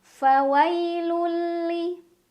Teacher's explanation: Cara bacanya tanwin dhammah dimasukkan ke huruf lam tanpa berdengung, jadi cukup ditekan. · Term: idgham bila gunnah